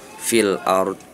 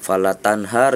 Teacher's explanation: maka si ro tersebut tafkhim ada sedikit tebal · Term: ro tafkhim